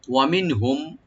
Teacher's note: মিনহুম নুন সাকিন এখানে জাহার করব আমরা